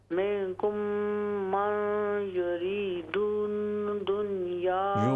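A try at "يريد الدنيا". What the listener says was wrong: युरीदुद्दुनिया, युरी दाल को दूसरे दाल से मिलाइए, युरीदुद्दुनिया।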